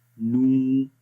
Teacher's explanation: ہے، جیسے نون واو پیش نو، اور یہاں پر نو دیکھیں، ہم نو پڑھ رہے ہیں تو ہونٹ تو گول ہو رہے ہیں لیکن واو کی آواز کہیں بھی نہیں ہے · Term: واو مدہ